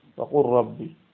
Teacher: লামের পরে র আসছে, ইদগাম হয়ে গেছে